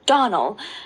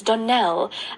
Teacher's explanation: Accent on the last syllable